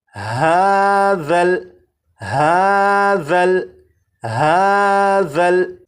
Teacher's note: اب اس لفظ کو پڑھیں گے، اور اس لفظ میں یہاں پر دیکھیں یہ ذال ہے، ذال کو نرمی سے پڑھیں گے، یعنی سی ٹی کی آواز کے بغیر پڑھیں گے، اور اس حرف کی سی ٹی کی آواز کو ختم کرنے کے لیے زبان کی نوک کو اوپر کے سامنے کے 2 دانتوں کے سرے سے جب لگائیں گے تو ذال کے اندر جو سی ٹی کی آواز ہوتی ہے وہ ختم ہو جائے گی